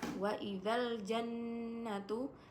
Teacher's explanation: gunna musyaddada karena terdapat nun yang bertasdid dan dibacanya didengungkan